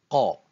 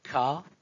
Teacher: Ce n'est pas ka, c'est qa, qa. Cherchez la prononciation au fond de la gorge